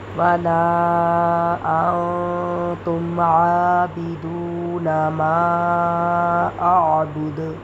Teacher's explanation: دال پیش دو، ما اعبدو. لیکن جب وقف کریں گے تو دال کو ساکن کریں گے، جب دال ساکن ہوگا تو اس کے اوپر قلقلہ ہوگا